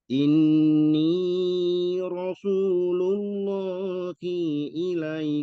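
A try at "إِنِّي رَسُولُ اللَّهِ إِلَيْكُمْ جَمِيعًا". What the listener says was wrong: I-nya pendek. I-nya pendek, coba. jalalah itu selalu dibaca panjang.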